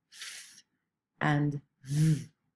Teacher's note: And the passive articulator, the one that's not moving, is the upper teeth. So we are moving the lower lip to touch the upper front teeth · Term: labiodental sound